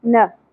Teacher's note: اس سنگل زبر کو ہم نے نا نہیں پڑھنا نا شارٹ رکھیں گے